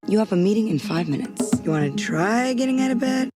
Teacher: notice the breathy quality of her voice and she also has more low end · She sounds like a human for sure, but also notice the breathy quality of her voice.